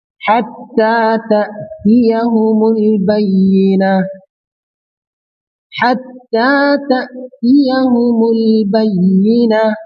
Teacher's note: देखिए हत्ता पे इसमें तशदीद वाला हर्फ है, ता मुशद्दद है, इसको जोर से अदा करेंगे।